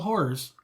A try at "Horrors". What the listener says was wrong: There's 2 syllables there.